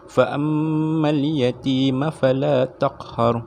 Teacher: Cara bacaan wajibul gunnah adalah dengan menekan suara pada huruf mim dan nun. Okey. Disertai dengan dengung sekadar dua harakat. Mim dengan nun tu ada tanda sabdu dan secara dengung, dibaca dengan dengung secara dua harakat.